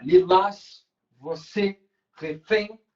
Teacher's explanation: Última sílaba é a tônica, então uma oxítona.